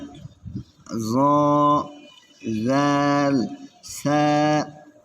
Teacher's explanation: জিহ্বার আগা সামনের উপরের 2 দাঁতের আগার সঙ্গে লাগাইয়া জ জাল সা। আবার 13 নম্বর মাখরাজ জিহ্বার আগা সামনের উপরের, আর এটা হচ্ছে 12 নম্বর সামনের নিচে, সামনের উপরের 2 দাঁতের আগার সঙ্গে লাগাইয়া জ জাল সা।